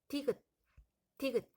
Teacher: 막았다가 터지는 소리니까 파열음이 되겠습니다.